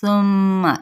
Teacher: میم پہ غنہ کرنا یعنی ناک میں تھوڑی دیر آواز کو ٹھہرانا